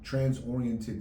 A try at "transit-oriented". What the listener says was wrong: Transit. transit-oriented. You said trans-oriented.